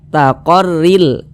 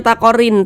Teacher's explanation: Yang digabungkan adalah suara tanwin. Kita menggabungkan bunyi tanwin ke dalam huruf lam. Ia melebur menjadi huruf lam. · Namun, gabungkan ke dalam huruf lam. Jadi, pengucapannya singkat karena tidak dinasalisasi. Jangan dibaca " rillaha," jangan dipanjang-panjangkan seperti itu.